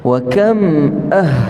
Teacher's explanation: ha yang keluar daripada halkum kita yang paling bawah ha biasa orang sebut Ha ni keluar dekat dada tak ada